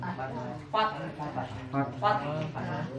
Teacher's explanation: Ya, haknya harus ke bawah. Fath makhrajnya harus sampai di wastul halqi. Harus ada di wastul halqi haknya.